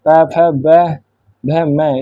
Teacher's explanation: इसका उच्चारण स्थान है ओष्ठ मतलब ओठों से।